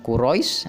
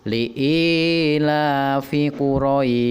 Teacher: Huruf shin dari kata Quraisy kita wakofkan sehingga kita baca panjang Quraisy atau huruf matnya kita baca 6 harokat